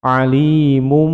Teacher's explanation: tanwinnya bertemu dengan ba menjadi bacaan iklab, berbunyi huruf mim panjang dua ketukan